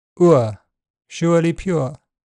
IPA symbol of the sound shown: ʊə